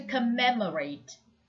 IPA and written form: kəˈmem.ə.reɪt (COMMEMORATE)